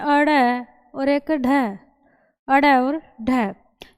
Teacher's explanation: जिनका उच्चारण करते समय जो हमारी जीभ का अगला भाग है वो तालु को एक झटके के साथ स्पर्श करके पीछे हटता है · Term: उत्क्षिप्त व्यंजन